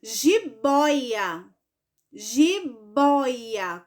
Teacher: boy é a segunda no caso é a penúltima o certo é a penúltima sílaba da palavra é a mais forte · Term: paroxítona